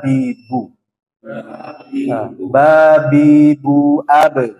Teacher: bibir atas dan bibir bawah merapat kemudian tidak disertai gunah jangan didengung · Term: huruf ba